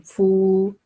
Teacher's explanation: fa is carrying dhamma and then followed by waw sakin. So it's a letter of madda. So we may give it 2 second time.